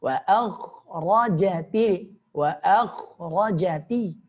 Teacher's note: Wa a tipis, kha tebal, ra tebal.